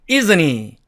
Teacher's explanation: 그 다음에 은과 흐가 만났어요. 그러면은 이 H의 발음은 은이 먹어버리기 때문에 또 사라지게 됩니다. 그러면 남은 게 isn't과 e가 남았으니까 이렇게 isn't he 이렇게 발음이 됩니다.